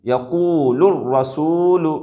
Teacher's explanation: یقول الرسول نہیں پڑھیں گے، لام کو لام سے نہیں ملائیں گے، بلکہ لام کو ڈائریکٹ را سے ملا دیں گے، یقول الرسول، اس طریقے سے۔